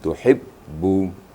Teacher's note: artinya tertahan suara membacanya tuhibbu Jangan rakhawa atau mengalir ya jadi suara tertahan sedikit waktu membaca ba bertasydid · Jadi suara tertahan sedikit waktu membaca ba bertasydid, ya. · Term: syiddah